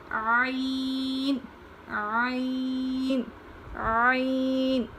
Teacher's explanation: عین کو حلق سے نکالتے ہیں، حلق کے نچلے حصے سے پڑھا جاتا ہے